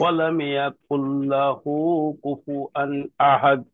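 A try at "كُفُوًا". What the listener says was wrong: কুফু আন হয়ে গেছে, এবার কুফু ওয়ান। ওয়ান। কুফু ওয়ান।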